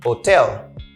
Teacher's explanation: I stress the second syllable